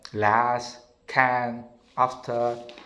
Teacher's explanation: the open central vowel, a, as in the word last, can, after